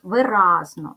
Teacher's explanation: буде три склади ділимо на склади ви разно ставимо наголос виразно наголос падає на другий склад